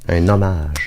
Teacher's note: on fait la liaison avec le N